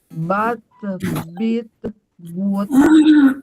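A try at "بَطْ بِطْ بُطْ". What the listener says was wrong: Nah, itu tidak itbak ya. Balpo, bilpo, bulpo. Nggak ada mantulnya juga, Bu. Balpo, pantulin. Nah, apa yang membuat huruf jadi bisa mantul? Jadi penekanannya kuat.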